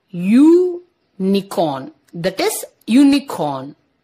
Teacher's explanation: the vowel U has a consonant sound of the letter Y